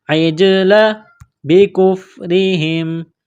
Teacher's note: جیم ساکن ہے یہاں پر قلقلہ کریں گے